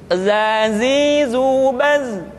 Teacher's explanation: di dalam huruf latin tetapi ingat huruf Za bersifat aljahr artinya ketika kita mengucapkan huruf Zaza suara kita mengalir akan tetapi nafas tidak boleh mengalir contoh yang salah seperti ini zza zzizu Seharusnya nafasnya tidak mengalirza